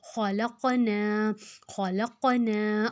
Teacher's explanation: اب دیکھو خا موٹا، لام کے ساتھ قلقلہ والا حروف ہے قاف ہے، جس کو ہم نے ہلا کر پڑھنا ہے